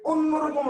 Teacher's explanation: মানে অ লিখছেন বাট উচ্চারণ কি করতেছেন ও দিয়া